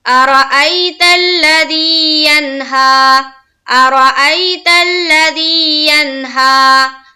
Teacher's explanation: یا مدہ کو ہم کس طرح پڑھتے ہیں؟ ایک الف کے باقدر کھینچ کر · زی میں ایک الف کے باقدر کھینچیں گے